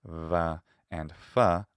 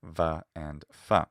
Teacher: They are bilabial fricatives, va and fa, unlike their modern equivalents, va and fa.